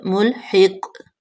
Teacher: قاف قلقلہ ہے، اس پہ قلقلہ کریں گے جب ساکن ہو جائے گا